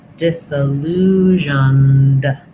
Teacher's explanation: syllabic N. So little schwa or no sound before the N. Disillusioned, and then just a D sound, disillusioned.